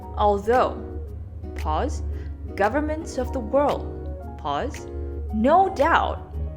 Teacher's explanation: that emphasis on no doubt suggests that something else is coming on later on